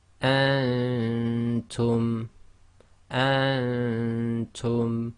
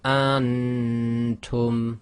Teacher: What you don't want to do is go antum. The Noon shouldn't be clear, and that's caused by keeping your tongue in the position of the next letter.